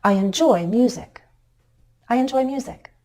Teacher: content word in a sentence I enjoy music I enjoy music when we have two or more syllables to work with as in music our voice can step down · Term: focus word